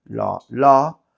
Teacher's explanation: Pero por ahora lo que se dice es que el único sitio en el que se da es en Andalucía Oriental, que quitamos una consonante final y hay una abertura vocálica